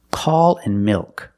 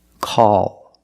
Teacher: these are both dark L's because you have the L at the end of the word after a vowel